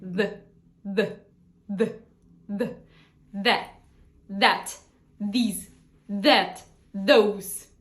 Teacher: наш як і наша з Так але вимовляється Трохи інакше Тобто ви ставите язичок так само між зубами і проштовхуєте повітря при чому при цьому включаєте гортань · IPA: ð